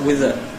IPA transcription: wɪð ə